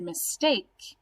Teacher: is our base word so when i say the word mistake that second syllable is where my root is and that's my base word and that's the part of the word i say louder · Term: accented syllables